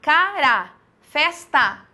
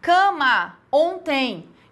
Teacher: Então a vogal oral e a nasal, a diferença delas é que com a vogal nasal você vai ter sempre esse marcado, tá? Então aqui, cara, festa, veja que eu tenho uma vogal oral. Cama, ontem, eu tenho vogal nasal. Por quê? Porque elas, na vogal nasal, elas vêm ligadas com essa nasalização, esse que vai aparecer in, on, em, sempre aparece.